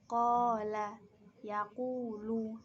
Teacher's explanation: domah diikuti waw sukun dibaca panjang satu alif atau dua harokat